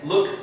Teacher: So you can hear the t sound instead of the d.